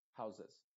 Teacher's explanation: No se va a decir houses. No estoy diciendo una E muy clara, sino una E muy apagada.